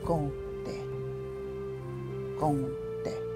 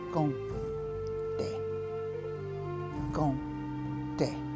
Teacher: It has a little nasal sound there in the beginning.